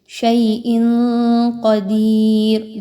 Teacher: را پر 2 پیش کی تنوین ہے اور وقف کرتے ہوئے جب اس پر جزم لگے گی تو اس را کو پر پڑھا جائے گا، باریک نہیں پڑھنا.